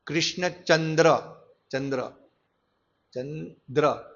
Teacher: ચંદ્ર એટલે ચંદ્ર બોલવા માટે આપણે જીભ તાળવાને ટચ કરવી પડે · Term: તાલવ્ય